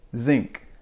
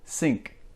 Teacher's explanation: the Z sound is 99% vibration of your tongue right behind your teeth the S sound is 100% air there's no vibration in your throat or in your tongue